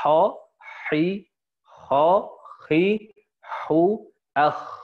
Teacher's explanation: Nah, tapi kalau nanti di Madinah, sebagian ulama di sana, kho-nya nggak terlalu banyak kotornya. Ya, hampir sama ha tapi ditebelin aja.